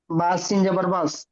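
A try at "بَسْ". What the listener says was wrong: জি, ঠিক।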